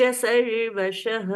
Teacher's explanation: सर्वशः, शह लास्ट में विसर्ग है, उसका ह जैसा उच्चारण